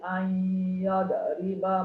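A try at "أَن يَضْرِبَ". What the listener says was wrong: An yadriba ma. An yadriba. Dia tak ada qalqalah.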